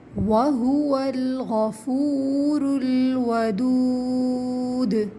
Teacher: دیکھیے اس میں غفو کے اندر واو ساکن سے پہلے پیش ہے، واو مدہ ہے، اس کو 2 کاؤنٹس کھینچیں گے